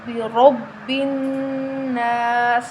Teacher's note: با پر تشدید ہے تو با 2 مرتبہ پڑھا جائے گا، ٹھیک ہے؟ 1 مرتبہ پچھلے حرف کے ساتھ مل کر، 1 مرتبہ اپنی حرکت کے ساتھ۔ · نون کے اوپر تشدید ہے، نون مشدد ہے تو ہم نون پر غنہ کریں گے۔